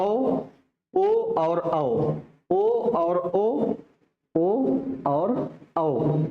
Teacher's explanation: कंठ प्लस ओठ दोनों से बोला जाए